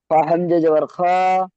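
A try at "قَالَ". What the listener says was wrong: আচ্ছা দেখেন, এটা হামজা বলছেন, হামজা বলছেন কেন? এটা তো সোজা দাঁড়ি বাম সাইডে বের হয়ে গিয়েছে, এটা তো লাম।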